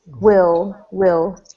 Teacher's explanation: yeah, this first word will, when you've got L at the end of a word or an L at the end of a syllable, instead of a L sound like in like or light, this is more like ol. Kind of like the word old, but without the D.